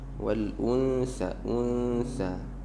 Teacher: والأنثى itu suara dengungnya ditipiskan.